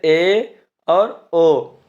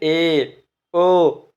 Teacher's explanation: अर्धसंवृत, जिन स्वरों के उच्चारण में मुख द्वार आधा बंद रहता है, जैसे ए और ओ। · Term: अर्धसंवृत स्वर